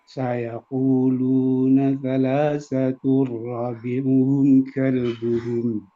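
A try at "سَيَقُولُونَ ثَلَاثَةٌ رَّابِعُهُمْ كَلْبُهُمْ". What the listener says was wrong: Rabi'uhum. Ro-nya kurang panjang sedikit lagi.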